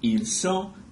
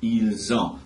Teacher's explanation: with avoir, you're just doing liaison, and that's what gives you the Z sound before you go into the verb